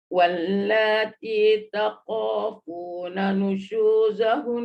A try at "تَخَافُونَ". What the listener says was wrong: Takho tu bunyikan sikit angin. Wallati takho, jangan tako. Takho.